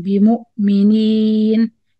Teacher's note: Make sure you do the ya clear without nasal sound.